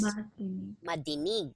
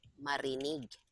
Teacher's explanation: whenever we have a D, okay, whenever we form this, the D becomes R.